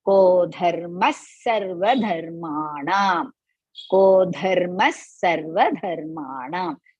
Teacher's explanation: after the visarga, sa is followed. So as a result, I'm going to use half sa for that.